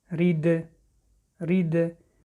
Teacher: ببینید حرف دال در اینجا صدا می دهد، به سببی که با سکون آمده است، حرف قلقله است: رید. برای قلقله شدن این حرف زبان را از مخرج تیز می گیریم